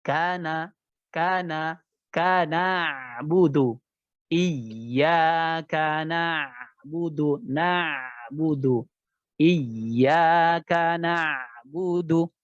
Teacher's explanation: huruf ain itu bukan punya sifat isti'ala, ya, tapi istifal. Jadi tipis saja, huruf tipis.